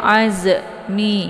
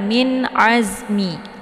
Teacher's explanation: huruf Za ini dialirkan bacaannya Jadi enggak boleh dipantul karena bukan huruf qalqalaf jadi jangan dibaca azm ya jangan Min Azmi Az ya itu · jadi yang didesiskan di sini adalah angin saja karena Za ini adalah bagian daripada sifatnya safir jadi anginnya lebih jelas